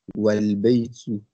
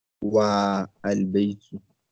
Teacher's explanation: the fat'a is dropped and the phrase is pronounced walbaytu, not wa albaytu